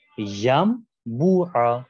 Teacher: دوسری مثال ین بوعا، ین بوعا کے اندر بھی اسی طریقے سے حرف نون آپ کے ساکن ہے، نون ساکن کے بعد جو حرف بے آیا ہے یہاں کے اوپر بے کی وجہ سے نون ساکن کو ہم میم میں تبدیل کر دیں گے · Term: قلب